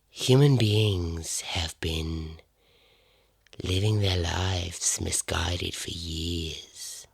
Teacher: she's just that kind of like breathy and it's relaxed